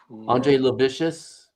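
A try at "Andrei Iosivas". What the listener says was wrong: Oh, Andre Yashavas. Yeah, that's an I. That's not an L. I know you think that's not an I. Yeah, it's an I. Yashavas.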